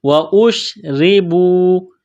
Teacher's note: واشربوا، حمزہ کو شین کے ساتھ ملانا ہے، را کے نیچے زیر ہے، را کو باریک کرنا ہے